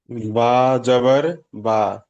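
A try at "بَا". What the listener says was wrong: বা আলিফ জবর বা। টান দিতে হবে।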